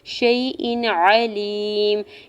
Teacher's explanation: حمزہ کے نیچے 2 زیر کی تنوین پر اظہار حلقی ہوگا، کیونکہ تنوین کے بعد عین حروف حلقی میں سے ہے تو تنوین پہ غنہ یا اخفا نہیں کریں گے. عین کے زبر کو جلدی سے ادا کرنا ہے.